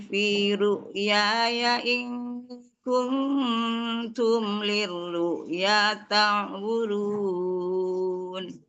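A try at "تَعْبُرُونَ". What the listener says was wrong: Ya ta'burun. Bunya pendek. Ya-nya panjang. Ya ta'burun. Tasdid langsung. Ta'burun itu kan Umi bacanya gini. Ta'burun. Ta'burun. Itu diganti gini. Jadi bunyinya jangan dinaikin. Jadi kalau bunyinya diayunin, dinaikin kan dia jadi panjang. Sementara itu pendek ya.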